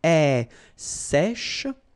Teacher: So this one is a bit tricky. So remember, we've got this E accent grave here. So it's really open.